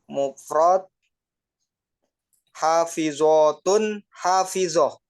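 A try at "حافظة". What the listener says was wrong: Mumtaz, betul.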